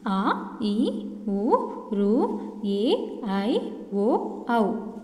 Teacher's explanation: 2 మాత్రల కాలంలో ఉచ్చరించే అక్షరాలు దీర్ఘాలు అంటారు.